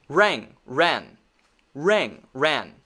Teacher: When I say RANG, I'm saying nga, the back of my mouth. Nga, nga, nga.